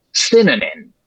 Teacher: the first and last syllables of that word synonym those are stressed. The first one is primary stress cuz it's high spit n.